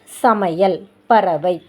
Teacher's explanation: ஐகாரம் சொல்லோட இடையிலையும் இறுதியிலையும் வரும்போது 1 மாத்திரை அளவில் ஒலிக்கும். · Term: ஐகார குறுக்கம்